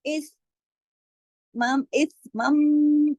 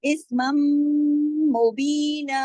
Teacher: नहीं है, बल्कि मीम है, वो भी मुशद्दद मीम है, तो यहाँ पर मीम और मीम का इदगाम हो जाएगा, तो यहाँ पे गुन्ना भी हो जाएगा, क्योंकि मीम मुशद्दद है · यानी आवाज को देर तक नाक में छुपा के फिर पढ़ते हैं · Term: बड़ा गुन्ना